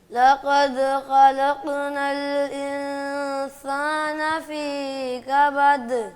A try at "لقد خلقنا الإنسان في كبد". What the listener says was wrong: فی کو لمبا کر دیا ہے اور سین کو